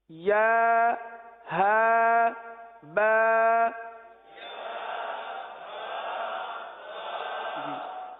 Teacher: یعنی ایک حرف ادا کریں، تھوڑا سا رک جائیں، اگلے حرف کو اس کے مخرج سے ادا کرنے کے لیے یہ رکنا ہوا، کیونکہ یا جو ہے یہ وسط لسان، وسط تالو، زبان کے درمیان اور تالو کے درمیان سے ادا ہوتا ہے، اور ہا جو سینے سے متصل حلق ہے یہاں سے ادا ہوتا ہے